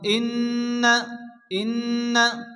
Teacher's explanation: ইন্না নুনের নুন গন্না ওয়াজিব